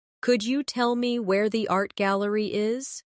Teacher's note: In connected speech, could you becomes could ya.